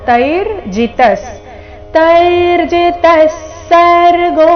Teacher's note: ತೈ ಆದ ನಂತರ ಅರ್ಧ ರಕಾರ